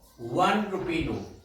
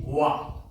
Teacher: one begins with a letter vowel, but the sound is not a vowel, the sound is wa, and wa is a consonant, and that's why we are to use a instead of n.